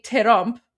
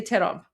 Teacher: in Persian we say terump, which is two syllables